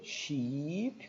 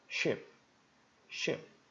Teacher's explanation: da palavra sheep, aqui ó, longa, sheep, com som de I, e da palavra curta e com som de E